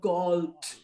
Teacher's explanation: The O there is not gold, but gold. And because the D is not followed by a vowel, it becomes a sort of a DT. More of a T than a D.